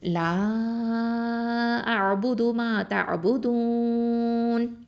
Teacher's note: இந்த இடத்துல வந்து ஐன் வந்து எங்கேருந்து வருது, வசத்தல் ஹல்குலேருந்து வருது, நடுத்தொண்டை.